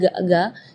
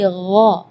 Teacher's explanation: Di ayat ini yang pertama di makhraj huruf ghain ya, ghairil maghdubi ya, perlu diperhatikan bukan G, bukan huruf G ya, bukan ga, tapi gha. Jadi kalau ga itu dia makhrajnya dari lidah. Ya, tapi kalau huruf ghain itu dari bagian tenggorokan ya. Jadi gha.